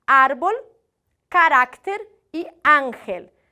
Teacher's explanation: Que são as nossas paroxítonas, ou seja, a penúltima sílaba mais forte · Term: graves ou llanas